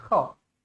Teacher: Kha pastikan ada macam getaran ataupun macam panggil sakit-sakit tekak lah.